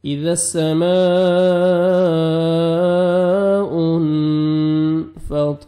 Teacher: اذا السماء، نون ساکن کے بعد حروف اخفاء جو 15 لیٹرز ہیں قاعدہ میں بتا چکا ہوں، ان میں سے فا ہے تو یہاں پہ آپ نے نوز میں ساؤنڈ لے کے جانا ہے، اخفاء کریں گے۔ اذا السماء انفطرت، طا کو موٹا کر کے پڑھیں گے، فطا، را کی مرزبر ہے، را کو موٹا کر کے پڑھیں گے، اور تا ساکن ہے تو لائٹ سے ساؤنڈ آئے گا۔